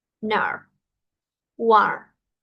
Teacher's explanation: Mi lengua pegada al paladar superior doblada hacia atrás.